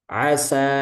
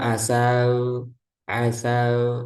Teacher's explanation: huruf Sin itu tipis setelahnya huruf alif nah alifnya dia ikut tipis